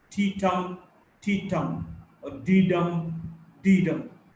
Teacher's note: the rhythm is unstressed, stressed, unstressed, stressed